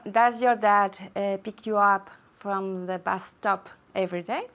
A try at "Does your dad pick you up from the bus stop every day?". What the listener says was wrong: Okay, good. All right, very good. But the intonation.